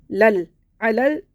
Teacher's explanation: عین کو حلق سے نکال کے پڑھنا ہے